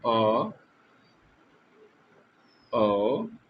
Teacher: इसका प्रयोग करते समय हमारा मुख मतलब पूरा नहीं खुलता है, आधा खुलता है। जैसे मानिए अ, आधा खुला है ना, औ आधा खुला है। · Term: अर्ध विवृत स्वर